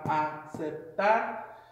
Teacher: the accent goes on the last syllable from right to left.